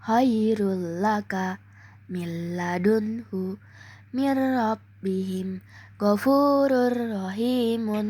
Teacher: Artinya saat membaca nun mati atau tanwin bunyi nun tersebut bergabung dan menyatu dengan huruf yang mengikuti tanpa dibaca guna atau mendengung. Hukum idgam bila guna ini terjadi ketika nun mati. · Cara membaca idgham bila gunnah adalah dengan memasukkan suara nun sukun atau tanwin sepenuhnya ke dalam huruf lam atau ro dengan cara mentasydidkannya dan tanpa disertai gunnah atau sengau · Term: idgam bila gunah